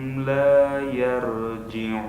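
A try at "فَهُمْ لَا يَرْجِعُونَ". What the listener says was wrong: Itu sudah bagus, cuman ro-nya harus tebal. Yar. Itu sudah tebal, tapi getarannya masih terlalu banyak. Yar, bukan seperti itu, tapi yar.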